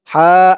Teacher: হা এক আলিফ টান জবরের পরে খালি আলিফ